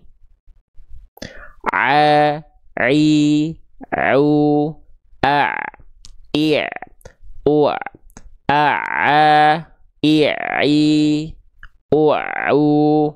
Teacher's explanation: Ain itu dilafalkan dari bagian tengah tenggorokan ya, tepat pada bagian katup epiglotis